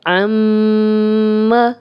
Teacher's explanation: اب میم پہ شد ہے تو ہم غنہ کر رہے ہیں اور میم کی زبر کو لمبا نہیں کر رہے